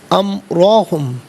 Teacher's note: امرا میں را پر زبر، را کو پر کر کے پڑھیں گے